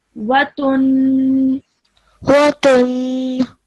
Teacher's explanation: you have to prolong that nasal sound for a bit longer